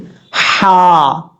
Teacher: اور لام کے بعد جو ہا ہے یہ باریک پڑھا جائے گا. اس ہا کو گلے کے درمیان میں جو حلق ہے وہاں سے ادا ہوگا